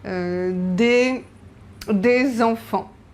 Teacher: the final S, like in the plural, we don't pronounce it in French